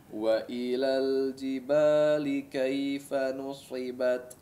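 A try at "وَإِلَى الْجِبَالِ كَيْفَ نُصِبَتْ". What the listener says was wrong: Baik, perhatikan di sini huruf sad, nusi ya, nusi bukan sui ya, nusi la, tapi nusi. Langsung ditarik si bibirnya ya. Nah, makanya jangan dibiasakan untuk memajukan atau memonyongkan kedua bibir ketika mengucapkan huruf sad atau huruf-huruf itbaq yang lain ya. Nusi. Nah, bunyinya langsung kasrah ya, meskipun kondisinya tebal tapi bunyinya kasrah bukan sui ya.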